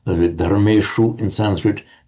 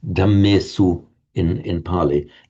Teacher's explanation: They all merge into an undifferentiated s sound in Pali.